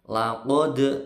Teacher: dalnya mantul, ini qalqalahnya sugro, mantul kecil karena di tengah-tengah.